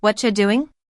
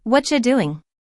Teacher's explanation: The whole what are you transforms into whatcha? Which might look strange on paper, but it's exactly how people talk.